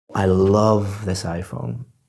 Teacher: so I'm emphasizing the word love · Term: word stress